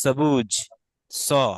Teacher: দন্তস্বটা অনেক সময় ছ এবং চ এর মাঝামাঝি উচ্চারণ করতে হবে। যেমন আমরা বলি না সবুজ, আমরা তো সবুজ এভাবে উচ্চারণ করি, কিন্তু সংস্কৃতে এটাকে বলতে হবে সবুজ, স।